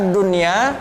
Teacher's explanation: cara bacanya tidak boleh dengung